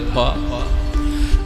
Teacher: भ का उच्चारण करने के लिए हमें ओंठ की जरूरत है। दोनों ओंठ को मिलाया, हवा को निकाला